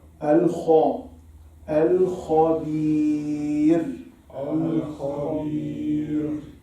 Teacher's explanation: خاء is استعلاء, elevated.